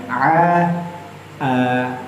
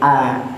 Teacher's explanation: ain itu bunyinya makhrajnya terletak di pangkal tenggorokan bagian atas